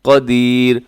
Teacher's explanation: بعد آگے قاف ہے، قاف حروف اخفا میں شامل ہے، قدیر، اور آخر میں جو را ہے یہ را باریک پڑھا جائے گا